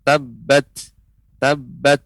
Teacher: tak sukun maka dia ada keluar nafas sedikit